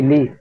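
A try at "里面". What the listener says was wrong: লি থাকতো না, লি মিয়ান।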